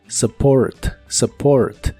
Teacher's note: la u de esta palabra se pronuncia como una a muy suave